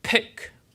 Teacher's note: There's an extra puff of air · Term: P with long release